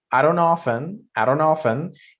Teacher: even that N at the end of often can be reduced. You can also just not pronounce the N.